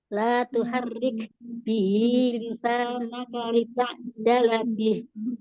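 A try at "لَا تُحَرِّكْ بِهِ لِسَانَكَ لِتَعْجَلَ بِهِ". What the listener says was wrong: Jangan diputus. Tadi Bunda gini, la tuharik bihi gitu.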